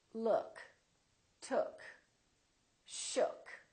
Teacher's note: for the neutral sound the lips are very slightly rounded